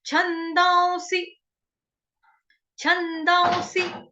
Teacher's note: जब भी अनुस्वार जो हो उसके बाद स या श हो तो उसका उच्चारण कैसे होगा, आधे व से होगा। ठीक है, आधा व ऊपर चंद्र बिंदु, उसकी तरह उसका उच्चारण होगा।